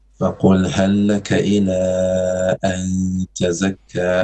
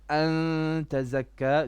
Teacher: No, I think you're adding a ya there, idgham with ghunna. There's no idgham with ghunna. This is ikhfa. An tazakka, noon only.